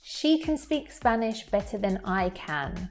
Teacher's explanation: the first can is a weak form. So you can't really hear it as much. It's kind of getting merged with the other words in the sentence around it.